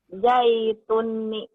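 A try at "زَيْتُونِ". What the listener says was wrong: Zai. Orang Sunda mah jaitun. Zai. Z. Zai. Zai itu. Zaituni.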